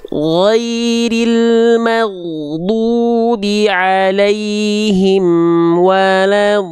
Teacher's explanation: Amnya nggak boleh berhenti. Am nggak punya sifat syiddah. Mim itu sifatnya tawasud. Dia amnya jangan berhenti. Terus mengalir sedikit.